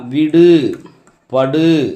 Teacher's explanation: தனியா ஒரே ஒரு குறிலுக்கு அடுத்து வரக்கூடிய குசுடுதுபுருக்கள் தன்னுடைய மாத்திரையிலிருந்து குறையாது முழுமையா ஒலிக்கும் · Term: முற்றியல் உகரம்